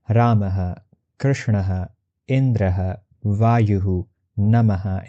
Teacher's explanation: With the assumption that visarga is consonant her, we pronounce the words that have visarga like ramaha, krishnaha, indraha, vayuhu, namaha, etc. Notice the echo happening with the vowel at the end to visarga.